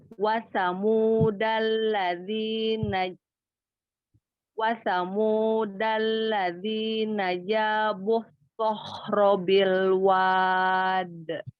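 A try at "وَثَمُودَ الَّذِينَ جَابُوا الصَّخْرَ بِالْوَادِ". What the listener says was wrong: Angkat lagi pangkal lidah pada huruf sod, lalu kasih sofir juga huruf sodnya, sod tasydidnya. Wasamudal ladzina jabus tampakkan sifat sofirnya. Jabus robil wad.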